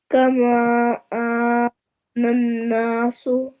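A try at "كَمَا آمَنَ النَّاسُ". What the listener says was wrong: यहाँ नून पे गुन्ना करना है। आमनन नासु, नून पे गुन्ना है ना। आमनन नासु।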